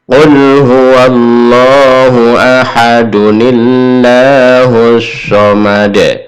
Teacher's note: tanwin diganti dhammah biasa, du biasa. Lalu hadirkan di sini nun bantu, disebut nun wikoyah.